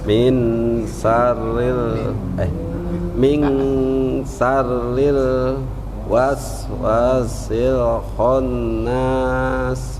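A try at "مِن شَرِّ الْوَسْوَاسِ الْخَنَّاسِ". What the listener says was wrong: Nah ini dengungnya Pak ya. Yang pertama tadi udah dengung pas, tapi pas terakhirnya kok nggak ditahan.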